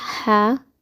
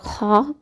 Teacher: جو ہا ہے اس کو باریک آواز میں پڑھا جاتا ہے، اور خا کو موٹی آواز میں پڑھا جاتا ہے